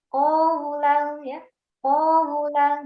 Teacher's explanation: kesalahannya adalah memanjangkan huruf sebelum huruf lin.